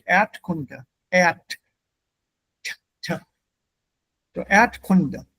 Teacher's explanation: When the R follows a vowel, the R, the sound R is vowelized. It becomes part of the vowel. So the R, Erd is not pronounced.